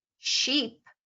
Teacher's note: if you said a word like sheep, you would be doing protrusion, retraction, and then closure, all in the same word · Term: labial shifts